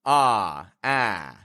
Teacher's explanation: It's the same letter, but I'm making a pure vowel. I'm making a vowel that isn't modified, it isn't distorted, it's just one position that's held out